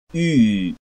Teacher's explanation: Close front rounded vowel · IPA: y